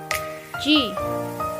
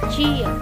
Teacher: like the G in English jeep, but unvoiced and with the middle part of the tongue pressed tightly against the roof of the mouth.